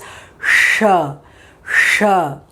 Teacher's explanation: The air is coming out kind of a whistle with a sh sound. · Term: Murdhanya letter